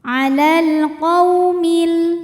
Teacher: Maka lam sukun dibunyikan dengan jelas atau biasa disebut dengan izhar qomari. Alal qou, qou ada harfu lin sebab ada wau sukun didahului baris fathah, maka dibacanya lembut.